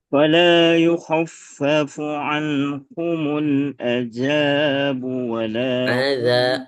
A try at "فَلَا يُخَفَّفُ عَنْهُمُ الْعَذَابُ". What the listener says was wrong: Azabu. Azabu. Jangan ditekan. Enggak. Mengalir aja. Azabu.